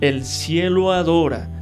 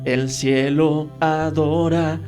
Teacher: estamos uniendo la última vocal de la palabra cielo con la inicial o la primera de la segunda palabra que es adora